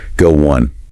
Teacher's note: Sometimes you'll hear a tiny W sound pop up in between go and on, making it sound a little like go one.